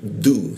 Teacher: menggunakan ujung lidah tempelkan ke gigi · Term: huruf du